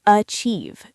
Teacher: Many learners say achieve, but it's actually achieve. The beginning is very soft, almost like a schwa sound, and the stress is on chieve.